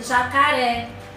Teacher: nós temos a palavra jacaré, onde ré é a sílaba mais forte desta palavra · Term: sílaba tônica